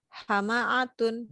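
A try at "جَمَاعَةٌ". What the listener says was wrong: Jama'atun. Bukan hama.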